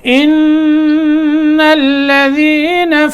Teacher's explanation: نون کے اوپر غنہ کرنا ہے کیونکہ نون مشدد ہے, یہاں غنہ ہوگا.